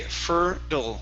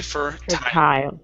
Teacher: right now you cannot mix the t and the d so if you're going to go with the flat d you have to say fertile if you're going to go with the normal t you have to say fur tile